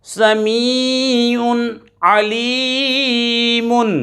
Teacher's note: عین حروف حلقی میں سے آ رہا ہے، ظاہر کر کے پڑھیں گے، غنہ نہیں کریں گے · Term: اظہار